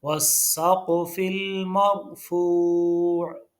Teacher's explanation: واو کو سین کے ساتھ ملانا ہے، کیونکہ سین کے اوپر تشدید ہے، الف لام نہیں پڑھے جائیں گے.